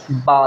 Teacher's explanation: बा दोनों होठों को मिलाएंगे, यानी दोनों हमारे होंठ मिलेंगे जिनको हम हरूफ शफ़विया कहते हैं, तो उसमें बा है पहला, बा।